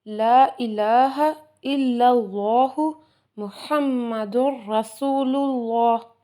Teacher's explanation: یہاں رسول کا را موٹا پڑھیں گے کیونکہ اس کے اوپر زبر آ گئی ہے